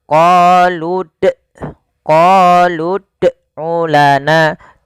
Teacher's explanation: misalnya qoludulana atau yang kedua kesalahan yang sering terjadi juga yaitu menambahkan hamzah pada lafal huruf dal yang dia sukun